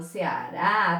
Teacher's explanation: Haha, eu falo Ceará, tá aqui a sílaba mais forte, tá? Tenho a última sílaba como sendo mais forte, então ela é uma oxítona.